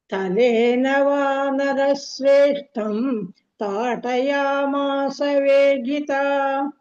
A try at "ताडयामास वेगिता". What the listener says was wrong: ताडया ताठ not ताट ताड